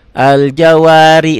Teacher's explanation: ri-nya tipis karena barisnya di bawah